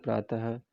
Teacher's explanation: विसर्ग का उच्चारण ह के रूप में होता है, जैसे प्रातः।